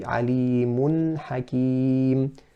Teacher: pronouncing it clearly with izhar without a qalqala. And in another example, man aman, so that's pronounced correctly, but incorrect would be to add a qalqala there and to say man aman, man, and that is incorrect.